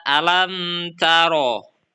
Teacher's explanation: Dalam bacaan ini, huruf mim dibaca jelas dan tidak didengungkan, serta tetap terdengar dengan jelas makhrajnya, disebut syafawi karena huruf mim keluar dari bibir atau syafah. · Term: idhar safawi